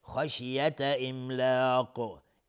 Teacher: خا از حروف استعلاست غلیظ تلفظ میشه